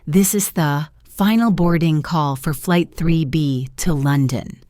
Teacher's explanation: The important stressed words are final, boarding call, flight, 3B, and London. The other words are quick. This is the becomes this is the four becomes fur. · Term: stress pattern